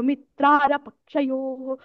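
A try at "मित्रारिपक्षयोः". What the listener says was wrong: మిత్రారా కాదు తుల్యో మిత్రారి రా కాదు అక్కడ ఉన్నది.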